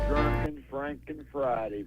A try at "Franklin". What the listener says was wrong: Franken. You said Franken. It's not Franken. It's Franklin.